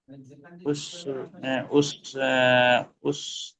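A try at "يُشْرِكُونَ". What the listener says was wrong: উস না, ইউস। ইউস। ইউ শুরু নেই, দেখেন ইউ শুরু নেই, র পেশ নেই ওখানে, ইউ শুরু নেই। ইউ শুরি।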